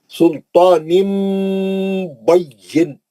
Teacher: نون کی آواز کو میم سے بدل کر غنہ سے پڑھتے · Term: اخلاب